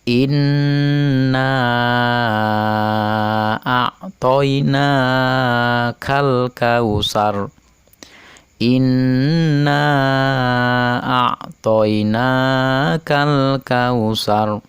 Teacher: al-nya dibaca jelas karena bertemu dengan huruf Kaf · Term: Idhar Qomariah